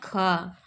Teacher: निम्नलिखित में अघोष महाप्राण ध्वनि है ख